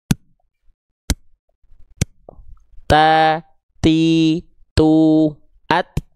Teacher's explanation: Maka ketika teman-teman melafalkan ta tadi pada makhrajnya seperti ini ya ke pangkal gigi sari atas dari persentuhan ujung lidah ke pangkal gigi sari atas itu keluar percikan nafas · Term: hams